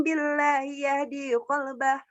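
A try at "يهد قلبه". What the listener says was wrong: Dinya panjangan. Yang di qalbah dipendekin. Sama ya di qalbah. Nanti dipendekin ya. Jangan ke bawah nada yang di qalbah.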